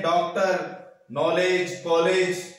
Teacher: आ और ओ के बीच की ध्वनि है अ, और जिसके आगत चिन्ह लग जाता है वो विदेशी शब्द होते हैं, विदेशी ध्वनियां होती हैं, जैसे कॉलेज, जैसे नॉलेज, जैसे डॉक्टर आदि, ठीक है। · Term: आगत स्वर